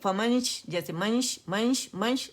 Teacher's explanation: فمنش، جیسے منش، منش، منش اگر شارٹ کروں، فمنش، اور شین کے مخرج کے قریب جائیں گے، ٹھیک ہے. غنہ نون چھپاتے ہوئے، غنہ ریٹین کرتے ہوئے، حرف اخفا ہمارا شین ہے اس کے قریب جائیں گے، لیکن نون سے پہلے کی حرکت میم کی اور اس کے بعد شین کی حرکت ہم نے پراپر ادا کرنی.